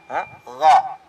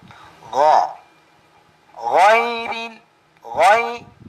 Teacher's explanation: Ang makhraj ng gha, ang lugar na kung saan maglabas ang gha ay sa pinakalas na dulo ng ating lalamunan sa bandang sa may bandang dulo o pinaka dulo sa may bandang las sa baba ng ating lalamunan.